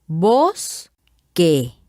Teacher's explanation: la mayor fuerza de voz en esta palabra también se encuentra en la primera sílaba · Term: acento prosódico